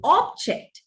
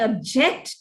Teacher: you accent the word on the first syllable you use it as a noun accent it on the second syllable it is used as a verb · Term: functional accent